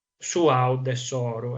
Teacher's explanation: E Bau è il nome sardo per indicare il guado, quindi un attraversamento di un fiume che evidentemente nel parlato non viene scandito così a compartimenti stagni, baude, sor, ma esistono varie elisioni, troncamenti che portano a pronunciare il nome su aude soru, ed ecco che cade la B.